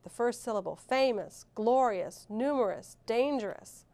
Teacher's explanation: which syllable is accented in each word? Right, the first syllable